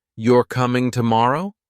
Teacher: with a rising tone at the end sounds like a question